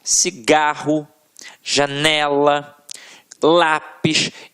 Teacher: a oxítona tem a sílaba tônica na última sílaba agora aqui paroxítonas em que a sílaba tônica está na penúltima sílaba · tônica está na penúltima sílaba reparem cigarro janela lápis Então realmente a sílaba que a gente proferiu com mais força sempre esteve na penúltima